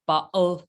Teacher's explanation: It can be pronounced like bottle, like a glottal stop